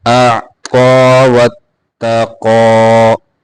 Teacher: قا کو پورا موٹا کر کے پڑھیں گے، قاف کو بھی موٹا کر کے پڑھیں گے ، اعطى واتقى وصدق بالحسنى صاد قاف دونوں کو موٹا کریں